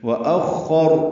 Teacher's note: وأخر میں حمزہ اقصی حلق سے ادا کرتے خا سے ملائیں گے